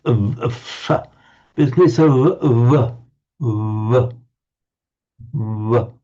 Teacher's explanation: It's almost a w, but the lips are slightly closer together. So it's between a w and a v.